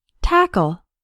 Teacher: tackle has two syllables and the stress is on the first syllable tackle the second syllable sounds like a short UL like in